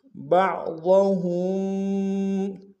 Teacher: ہا کو میم ساکن کے سامنے لانا، میم ساکن میں غنہ کریں گے